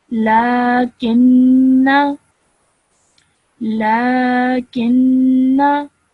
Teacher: I have not pronounced the blank alif, so I did not elongate my sound at the end of the noon.